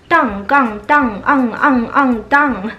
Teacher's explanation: 在汉语当中，这个当杠当昂昂昂当这个音其实是一个后鼻音